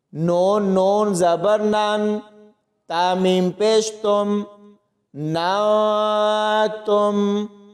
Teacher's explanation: اس کے بعد میم کو حمزہ کے ساتھ ملائیں گے تو یہاں پر جھٹکا دے کے پڑھا جائے گا، اور آگے نون کو نون کے ساتھ ملائیں گے تو ساکن حرف کے بعد تا ہے تو یہاں پر اخفا ہوگا، یعنی اس ساکن نون کی آواز کو چھپا کر پڑھا جائے گا